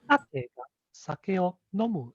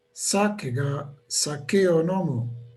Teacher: So the sa and no have the high pitch accent.